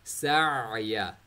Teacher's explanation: आइन middle throat से circulate हुई आवाज़ आ रही है